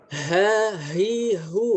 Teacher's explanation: hurufnya itu dia membawa udara dari tenggorokan bagian bawah ke atas ya, keluar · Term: huruf ha